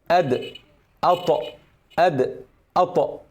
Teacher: حرف الدال والطاء مثلا بيطلعوا من طرف اللسان، فطرف اللسان بيلمس المنطقة دي بالضبط. لما يجي يحصل قلقلة بنعمل اهتزاز أو اضطراب، يقوم سايب المخرج كده كده، بيعمل كده بالضبط.